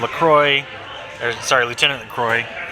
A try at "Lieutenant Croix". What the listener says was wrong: it's not LaCroix, it's just Croix, Lieutenant Croix. K-R-O-Y, not Croix like the beverage. it's not LaCroix, there's no love.